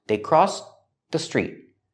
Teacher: Make a stop T, link it to the next word.